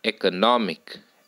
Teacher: four syllables third syllable is stressed third syllable text primary stress first syllable text secondary stress x